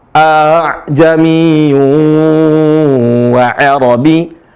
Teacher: hamzah kedua ya dibaca antara hamzah dan ha